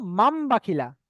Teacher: মান বলা যাবে না, কারণ নুন সাকিনের পরে বা এসছে। তাই নুন সাকিনের আওয়াজকে আমরা মিমের দ্বারা পরিবর্তন করব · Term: ইকলাব